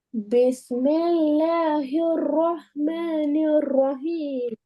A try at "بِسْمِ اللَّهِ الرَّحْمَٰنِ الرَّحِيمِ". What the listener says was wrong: இப்ப கடைசியில வர ரஹீம் பெரிய ஹா வந்துக்குது.